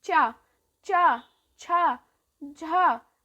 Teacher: आपकी जीभ है वो अपने आपके तलवे को स्पर्श कर रही है, यही है तालु वर्ग।